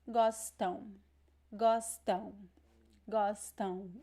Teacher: See that I don't pronounce the M at the end of words. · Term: nasal sound